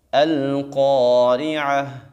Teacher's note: قاف کو خوب موٹا پڑھیں گے، اور اس لفظ کے لاسٹ میں عین اور ہا کو ہم نے واضح کر کے پڑھنا ہے